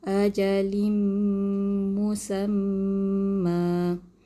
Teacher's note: Cara bacaan untuk mad iwad ialah dibaca baris satu di atas sekadar 2 harakat.